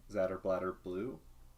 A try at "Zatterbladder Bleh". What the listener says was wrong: Bleh. Not blue, bleh. Come on, Zatterbladder Bleh? Zatterbladder Bleh? That's how you say it, it's Zatterbladder Blah.